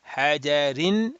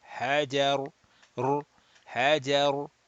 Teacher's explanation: Jim has a which is jim, which has a fatha. So the ra sakin will be read mufakham, rounded. Hajar, hajar, like that.